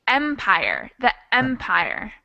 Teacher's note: so it's the first syllable that's stressed